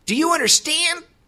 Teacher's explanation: if the sentence ends in the word understand, then actually the first D can be canceled, but the second D is more of a stop. It's not really canceled.